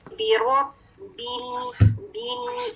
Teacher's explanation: با کی کسرہ بی والی ساؤنڈ ہے, یہ بے نہیں ہے